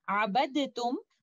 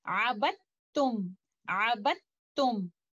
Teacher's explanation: will not recite letter Dal, and we will directly go to letter Ta. That's why you can see letter Ta has a shadda indicating idgham kamil.